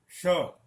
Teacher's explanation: इसका उच्चारण स्थान मूर्धा है, इसके लिए मूर्धन्य श कहते हैं